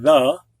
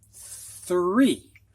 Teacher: one is a voice sound like in the the other is an unvoiced sound which is just a breath like in three